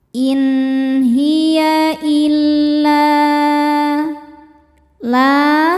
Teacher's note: Maka cara bacanya lam dibaca panjang boleh empat boleh lima harakat. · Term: mad jaiz munfasil